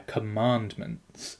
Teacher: in spoken text the middle syllable is given the most emphasis